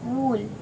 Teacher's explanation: muscles at the back of the tongue is raised High well the tongue tip is directly behind the lower front teeth the lips are protruding quite rounded but almost closed